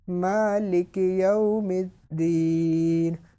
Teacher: واؤ لین اور یا لین کو بغیر کھینچے بغیر جھٹکا دیا نرمی سے معروف پڑھتے ہیں، بالکل جھٹکا بھی نہیں دیا، یو بھی نہیں پڑھا اور یو بالکل لمبا بھی نہیں کیا، بالکل نرمی سے مالک یوم الدین.